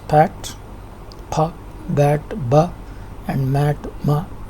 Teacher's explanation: There are sound forms using both means by, upper and lower lips, where lips means labia. The initial sound in the words pat, pa, bat, ba and mat, ma are all bilabials.